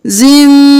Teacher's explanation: زا کو میم کے ساتھ ملانا ہے غنہ کرتے ہوئے